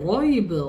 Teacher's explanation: Zalikal kitab la raib fi. Ra dibaca dengan tebal. Ataupun istilah bahasa Arab ni ada dibaca dengan mufakhamah, iaitu dengan tebal.